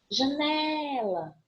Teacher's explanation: Eu vou ter essa penúltima sílaba tônica e ela não é acentuada. Eu tenho um acento tônico, mas eu não tenho um acento gráfico em janela. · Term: paroxítona